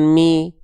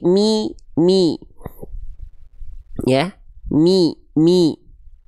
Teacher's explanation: Teman-teman, selanjutnya kalau ada vokal i ketika melafalkan ngaji, di ketika ngaji, tolong vokal i-nya jangan miring-miring ke vokal e